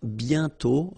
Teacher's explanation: And then the final T is not pronounced.